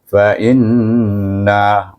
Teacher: maka kita baca dia dengan wajibul ghunnah 2 harakat. Dengan dengung maknanya. Wajib dengung 2 harakat.